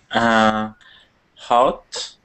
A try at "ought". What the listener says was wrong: Not hot. There's hot. No H. It's just ought. Try not to put the H in there. It's not hot. It's ought.